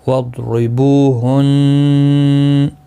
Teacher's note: نون مشدد پر غنہ ہوگا اور گنہ کے ساتھ وقف بھی ہوگا. یہاں پر وقف جائز ہے، پھر اس کی حرکت کو نہیں پڑھا جائے گا.